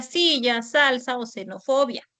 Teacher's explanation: la letra S y la letra X, que representan a la fricativa alveolar sorda